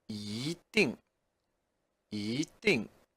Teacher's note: because it's followed by 定, which is fourth tone, the 一 becomes 一, second tone